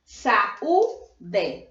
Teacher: é o encontro de duas vogais só que é na separação de sílabas eles ficam separados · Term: hiatus